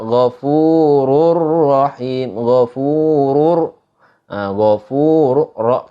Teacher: Ketika kita baca huruf ro-nya itu dibaca tebal.